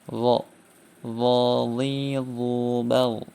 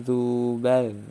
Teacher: Huruf dha ketika kasrah dan dhammah ini berbeda dengan huruf dzal yang berharokat kasrah dan dhammah. Huruf dha ini termasuk huruf isti'la, sehingga dibaca tebal, sedangkan dzal ini termasuk huruf istifal, sehingga tidak ada ketebalan. Huruf dha ketika kasrah dan baik ketika fathah, kasrah atau dhammah itu dibaca tebal.